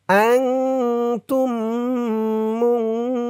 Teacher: অক্ফ করার কারণে হু 3 আলিফ টান হয়েছে। হু বলে 3 আলিফ টান দিয়ে এই নুনকে ধরতে হবে, নুনের উপরে জবর সাকিন হয়ে যাবে।